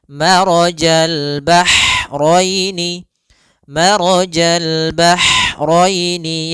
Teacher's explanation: ha atau bisa kita sebut dengan ha pedas, yaitu adanya aliran nafas yang kita lafalkan dan dia lembut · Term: ha kecil